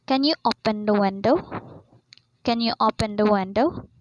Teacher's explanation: the pitch or the Rising sound there is in the end word which is window